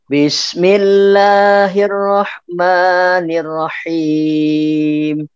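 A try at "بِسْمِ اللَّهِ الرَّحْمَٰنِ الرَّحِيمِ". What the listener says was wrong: Yang Rahman terlalu panjang, Pak. Tinggal melatih nih panjang pendeknya.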